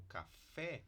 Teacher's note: palavras como café em que a gente tem a média baixa quando essa essa sílaba fica átona então é acrescentando algum sufixo